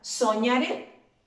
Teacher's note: Y esa, si ustedes se fijan, sí lleva el acento ortográfico, gráficamente. Es una palabra aguda porque su fuerza de la voz o su acento va en la última sílaba.